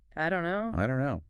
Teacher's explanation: The T sound in don't just vanishes before the key sound in no.